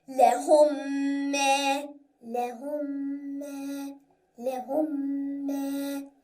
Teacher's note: So mim with shadda is exactly like noon with shadda. We have to make Ghunnah in both cases.